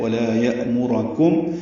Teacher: یأمرکم میں حمزہ ساکن جھٹکے سے ادا کیا جائے گا. میم کو معروف طریقے سے جلدی پڑھیں گے، را کو پر پڑھیں گے لیکن جلدی پڑھیں گے. کاف باریک ہے، میم ساکن پہ اظہار شفوی ہے.